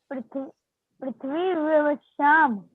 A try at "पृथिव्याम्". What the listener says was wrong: पृथिव्याम, पृथ्वी व्याम नहीं, पृथिव्याम, पृथिव्याम।